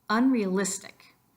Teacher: two of those syllables get extra emphasis the first one would be the unn but also the it of realistic